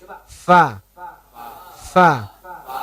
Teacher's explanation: cukup ujung gigi disentuhkan di batnus syafatis sufla. Di perut bibir bagian bawah. Sentuhkan situ, keluarkan anginnya. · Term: huruf fa